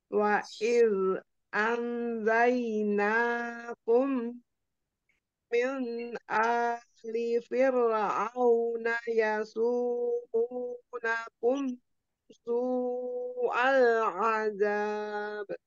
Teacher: dalnya jangan z tapi dialirkan rokhoah